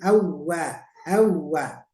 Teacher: Waw tasdid itu nggak boleh ditahan, ditekan saja sekali ngayun awwa gitu ya, tidak awwa, tidak boleh ya, baru ditahan waw itu karena didahului oleh nun mati tanwin.